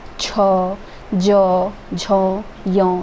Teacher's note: ये सारी ऊपर तलवे से आवाज़ निकल के आ रही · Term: च वर्ग